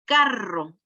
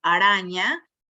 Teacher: Una es vibrante, fuerte, y la otra no.